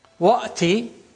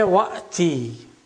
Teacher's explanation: When we say Wa'ti or Fa'ti, the first Hamza, which is Hamzatul Wasl, is omitted. So only one Hamza remains.